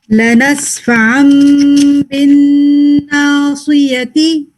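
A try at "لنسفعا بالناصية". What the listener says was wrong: ना ना का जो है ना वो लाइट पे ही रखना है. चला गया था थोड़ा सा.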